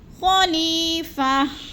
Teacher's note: یا مدہ کو ایک الف دو حرکات کے برابر ہم نے لمبا کر کے پڑھنا ہے